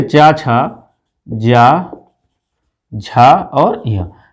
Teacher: अगर हम चा, छा, जा, झा की बात करें तो इसको हम क्या कहते हैं, इसको हम तालव्य व्यंजन कहते हैं